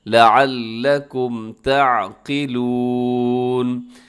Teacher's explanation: لام کے اوپر تشدید ہے، اس کو بھی آپ نے ذرا مضبوطی سے پڑھنا ہے